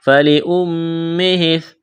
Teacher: کے اوپر کڑا زبر ہے، الف کے برابر کھینچنا ہے، فَلِأُمِّهِ میم مشدد ہے، آواز ناک میں چھپائیں گے